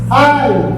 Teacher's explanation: Na paixão, o som não sobe, o som desce. · olha como o A é mais forte que o I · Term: decrescente